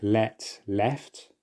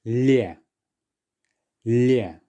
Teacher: can you hear that the L there has been softened? It's as if that letter Y has slipped in between the L and Ye. Now I say slipped in because it's not being clearly pronounced.